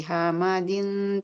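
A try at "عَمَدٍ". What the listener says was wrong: Ain, ain. ain, bukan ha. Ain. Amadin.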